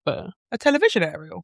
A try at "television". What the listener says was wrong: It sounded like you put a really weird emphasis on vision.